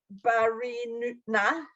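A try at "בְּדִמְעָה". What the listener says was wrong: Bedima. It's a dalid. It's got a little hump on its back. Bedima. It's a dalid.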